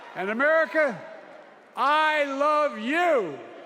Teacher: he shows signs of muscle tension in the throat, which forces his voice to become tense for a moment. It's very faint but noticeable.